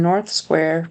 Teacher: couldn't quite hear that th very well so it almost sounded like North Square without a th